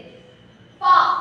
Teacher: பா என்னும் எழுத்துக்கள் இதழ்கள் இரண்டு ஒட்டுவதால் பிறக்கிறது. பா அப்படிங்கும் போது ரெண்டு இதழ்களும் சேரும் பொழுது என்ன ஆகுது, அந்த ஒலி பிறக்கிறது.